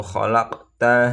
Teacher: namanya qalqalah sugro. Karena qof-nya sukunnya matinya asli.